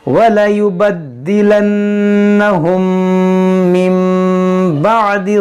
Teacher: یہاں دیکھیں میم ساکن کے بعد میم، یہاں پر ادغام شفوی ہوگا، یہاں نون ساکن کے بعد با، یہاں پر اقلاب ہوگا